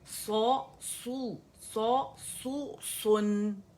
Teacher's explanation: تو نون واضح ہونا چاہیے, اس کو موٹا نہیں کریں گے.